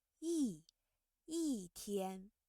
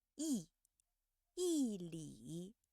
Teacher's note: When the character yi is followed by a word with the first, second, or third tone, you see yi changes to the fourth tone